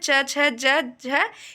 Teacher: च छ ज झ यह आपके तालव्य व्यंजन है